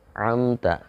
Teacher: ketika menyebut Nun dan mim yang sukun itu ada getaran di rongga atau di Pangkal hidung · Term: Nun dan mim sukun